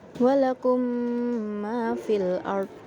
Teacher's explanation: memasukkan mim ke mim yang selanjutnya, atau dia itu dengung, tasydid. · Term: idgham mimi